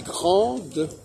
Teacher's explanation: En réalité, il est grand, ça s'écrit G-R-A-N, ça prononce grand, et elle est grande, ça se prononce G-R-N-D-E, D, il n'y a pas besoin de mettre un E, parce que de toute façon, il n'y a qu'au féminin qu'on va prononcer le D